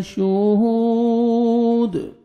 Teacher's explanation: کھینچنا ہے، شہود، ہا کو 1 سیکنڈ کھینچنا ہے، واو مدہ، واو سکون سے پہلے ضمہ ہے اور دال ساکن ہو جائے گا، قلقلہ کریں گے